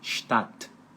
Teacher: S antes de p de pato e T de tatu é um chiado forte